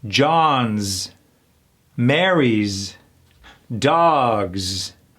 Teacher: the possessive s is also pronounced as a z